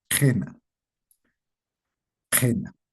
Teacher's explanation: Cuando la la i y la u se pronuncia normalmente como i y u en las palabras en general, pero en las palabras cuando la i y la u están en contacto con la ja, es es estas van a variar. La i se va a tornar más abierta, va a sonar un poco como e